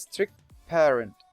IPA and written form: strɪkː peərənt (strict parent)